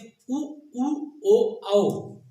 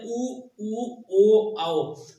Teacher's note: वृत्ताकार का मतलब है उ ओ औ, मतलब हमारे होंठ का आकार जो है वो गोलाकार हो रहा है